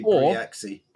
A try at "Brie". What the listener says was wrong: Or it could be just Brie, because Grand Prix, and you don't pronounce the X, it's just an E sound.